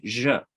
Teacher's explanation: it's the zh sound. So it's the kind of voiced SH